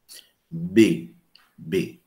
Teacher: Quando eu digo B, eu coloco a mãozinha aqui no pescoço e vejo uma vibração das cordas vocais. Então, significa que é vozeado.